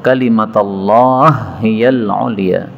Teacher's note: hak ketemu hak boleh idgham